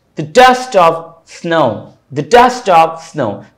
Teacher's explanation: तो द unstressed डस्ट stressed, ऑफ unstressed स्नो stressed, ठीक है। तो यहां पर भी एक अनस्ट्रेस्ड एक स्ट्रेस्ड, यानी एक आयम, फिर अनस्ट्रेस्ड फिर स्ट्रेस्ड फिर एक और आयम, दो आयम्स यहां पर भी मिल गए, ठीक है।